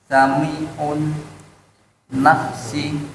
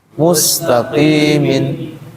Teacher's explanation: sin posisi ada di ujung lidah tempel ke gigi bawah ya. Kemudian dia mengalir ya mengalir ee udaranya namanya huruf rikhwah.